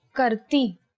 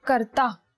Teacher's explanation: karti and if you are male you would say karta so the last vowel changes it is e for females and ah for males